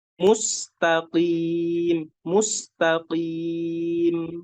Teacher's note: Makhrajnya dari pangkal lidah, ditempelkan ke langit-langit atasnya. Mustaqim, mustaqim. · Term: huruf qaf